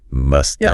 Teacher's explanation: the word have h a v often reduces down to just that unstressed vowel sound